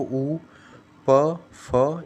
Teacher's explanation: तो इनमें दोनों आपके होट जो होंगे वह आपस में मिलेंगे